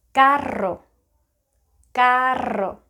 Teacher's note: native Spanish speakers put the tip of the tongue behind their top teeth this time, put it there, and try to leave it there.